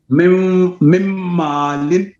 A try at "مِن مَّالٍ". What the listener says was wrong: یہاں پہ غنہ ہے. ادغام مع الغنہ ہے. غنہ تو ہے نا مما.